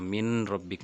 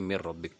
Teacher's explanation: اب آپ دیکھیں کہ ہم نے نون اور را کا ادغام کیا تو یہ دونوں حروف یہاں بغیر غنّہ کے ہیں، یہاں من ربک نہیں بلکہ مر ربک ڈائریکٹ پڑھا جائے گا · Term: ادغام بلا غنّہ